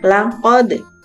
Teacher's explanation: Membacanya harus memantul karena merupakan bacaan qala-qala.